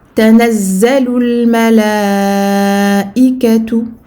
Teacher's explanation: Tanazzalu. Ici, on double le za, puis on fait la liaison vers le lam de al-malaikatu. Donc les 2 premiers mots donneront Tanazzalul malaikatu.